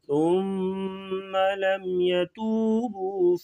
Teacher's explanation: ثم سا کو نرمی سے پڑھیں گے اور ثم کی میم پہ غنہ کریں گے